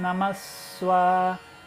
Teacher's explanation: Então ele vai dobrar a duração do S.